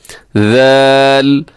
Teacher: ذال کے اندر مسٹیک کے چانسز ہوتے ہیں کیونکہ ذال کو لوگ زال پڑھ دیتے ہیں، تو وہ درست نہیں ہے، اس کو نرمی سے پڑھنا ہے اور اس میں سیٹی نہیں ہے